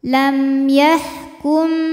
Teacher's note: mim sukun menghadapi selain mim dan ba yaitu ya maka mim dibaca m jelas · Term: izhar syafawi